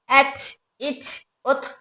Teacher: ता में सिफत हमस की वजह से हवा बाहर आ रही है